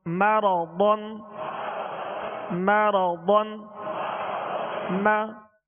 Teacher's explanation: احدن میم زبر ما را زبر را مرا ضاد 2 زبر ضن مرضن مرضن. ضاد میں ہونٹوں کو گول نہیں کریں گے، ضاد کو پر پڑھیں گے. را پر زبر ہے، را کو بھی پر پڑھیں گے، اور ضاد کو پر اس لیے پڑھیں گے کہ حروف مستعلیہ میں سے ضاد کو پر پڑھیں گے، یعنی موٹا پڑھیں گے.